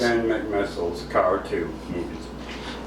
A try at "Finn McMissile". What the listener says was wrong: It's technically Finn McMissile. It's Finn, not Fins.